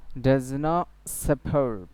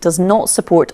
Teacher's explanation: এখানে টিকে কি করে দেওয়া হয়েছে গ্লোটাল স্টপ করে দেওয়া হয়েছে ডাজ নট ছিল এখন টিকে ফেলে টিকে গ্লোটালাইজেশন করা হয়েছে এখানে টিকে গ্লোটাল পড়া হয়েছে ডাজ নট অর্থাৎ টি উচ্চারণ করতে গিয়ে আবার ফিরে এসেছে